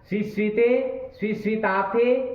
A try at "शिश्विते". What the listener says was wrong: स्वी क्या कर रहे हो? उधर स्वी नहीं है, उधर तो सी ही है।